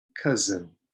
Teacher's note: this s is sometimes difficult because it makes a z sound